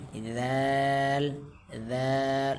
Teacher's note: دال میں ہمیں زبان کی چوٹی اوپر والے جو دانت ہیں وہاں لگانی پڑے گی